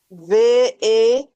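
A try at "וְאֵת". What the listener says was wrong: Il faut faire la liaison V. Barrette, hein, V. Oui, tu sais, c'est comme si tu as, voilà, V, et, voilà. Essaie de reprendre un peu plus soutenu, vas-y, reprends.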